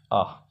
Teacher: बच्चों, आ बोलते समय हमारा मुख पूरा खुलता है। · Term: विवृत स्वर